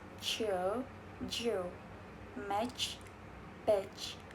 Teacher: They begin as stop and realize as fricative. Ch is voiceless, j is voice. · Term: post-alveolar affricates